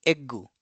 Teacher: the Japanese perceive the final consonant as being long and tend to insert a small sue. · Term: long consonants